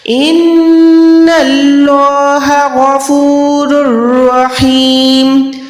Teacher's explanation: نون مشدد ہر حال میں گناہ ہوتا ہے، یہ آواز کو ناک سے ادا کریں گے، اللہ کا نام موٹا رکھیں گے.